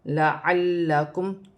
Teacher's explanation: لام مشدد ہے، اسے دو مرتبہ پڑھا جائے گا